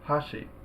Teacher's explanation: the first syllable the first Mora is high and the second more is low